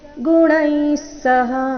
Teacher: ಗುಣೈ ಆದ ನಂತರ ವಿಸರ್ಗ ಉಚ್ಚಾರಣೆ ಸ ರೀತಿ